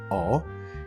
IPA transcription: ɔ